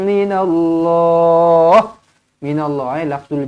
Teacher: minallahul jalalah dibaca dengan tebalah sebab apa huruf sebelumnya berbaris atas